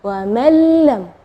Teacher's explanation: idgham bila ghunah tidak ada dengung · Nah, di situ kita bacanya wa man lam ya, jadi huruf nunnya tidak ada, atau kita dibilang idgham ke huruf berikutnya dan gunnahnya tidak ada, wa man lam ya. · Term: idgham bila gunnah